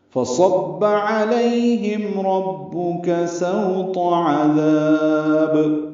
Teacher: علیہم لئی لین ہے، معروف طریقے سے پڑھیں گے نرمی سے، ہم میں میم ساکن پہ اظہار ہے، اظہار شفوی · عذاب عین وسط حلق سے ادا کریں گے